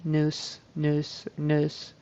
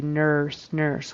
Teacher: Nurse with a tongue going back and up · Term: vocalic e r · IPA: /ɝ/